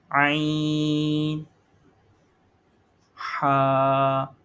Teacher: عین اور حا یہ حلق کے درمیان والے حصے سے ادا کیے جاتے ہیں، یہ درمیان والا حصہ ہے حلق کا، مڈل تھروٹ.